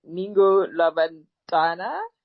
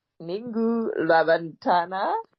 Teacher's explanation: it's a funny sort of click at the front of your mouth. You sort of put your tongue against your your teeth and away for that C.